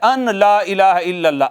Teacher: نون ساکن کے بعد چونکہ لام آ جاتی ہے نا تو نون کا لام میں ادغام ہو جاتا ہے